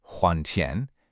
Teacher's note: if you use a falling tone instead, huan tian, it means to exchange currency